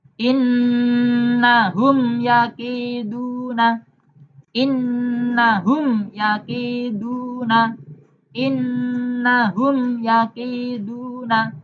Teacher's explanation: Ya ini bukan ba dan mim. Maka cara membaca mim sukun harus jelas. Tidak boleh ditambah dengung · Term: idhar syafawi